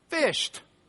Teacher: But you changed the D sound to a T.